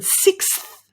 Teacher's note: It's difficult because you've got a k followed by a s followed by a th. Putting those together without a vowel sound in between is what makes it tricky